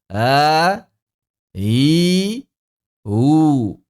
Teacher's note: kita menilai bahwa hamzah musahalah ini jaharnya berasal dari hamzah. Begitu kan? Kemudian rakhawahnya berasal dari ha. Begitu. Tarkiknya sama.